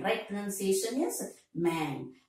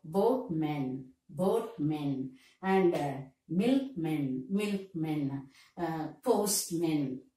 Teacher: So the first syllable is stressed here regarding these words ending with M-A-N. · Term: stress on the first syllable